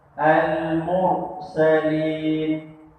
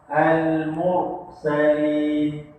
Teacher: Masa sebut roh tu pangkal lidah terangkat.